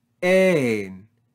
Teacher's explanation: rise and fall on the syllable with no breathing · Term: circumflex accent